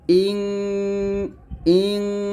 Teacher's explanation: নুন সাকিনের পরে সিন আসে তখন তাকে ইকফা গুন্না বলা হয় ইকফা গুন্নাটা আমরা নাকের ভিতর থেকে গুন্নাটা করি